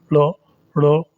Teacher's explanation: इनके जो अन्य नाम हैं उनको उसमें एक तो द्विस्पृष्ट कहते हैं। द्विस्पृष्ट का मतलब है जीभ 2 बार सतह को स्पर्श करती है। जो ड़ बोलेंगे, ड़ ड़ 2 बार जीभ स्पर्श कर रही है इसको बोलने में, और ऐसे ढ़ को बोलने में भी 2 बार स्पर्श कर रही है।